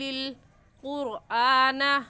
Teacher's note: قرآن میں را ساکن ہے، را ساکن سے پہلے والا لفظ قاف ہے جس کے اوپر پیش ہے، تو اس را ساکن کو پر یعنی موٹا کر کے پڑھیں گے